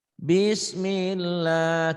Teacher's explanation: Kenapa tipis tarqiq karena sebelum lafadz Allah berharakat kasrah kasrah atau dibawah bismillah tipis tebak-tebak tetap tipis tipis tipis Kenapa